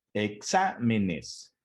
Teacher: La sílaba tónica se encuentra en la antepenúltima sílaba, ¿sí? La última sería nes, la penúltima sería me y la antepenúltima sería xa, que es donde recae la sílaba tónica. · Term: palabra esdrújula